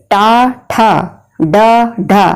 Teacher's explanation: टा ठा डा ढा, जीभ अंदर को मुड़ रही है। तो जब बोलते समय जीभ अंदर को मुड़े तो उनका उच्चारण स्थान होता है मूर्धा। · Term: टवर्ग